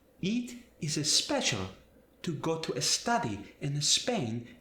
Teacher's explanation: a native Spanish speaker, when they're speaking English, is going to add that E to English words.